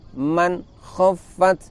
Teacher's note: man khaffat hanya ada sedikit dengung saja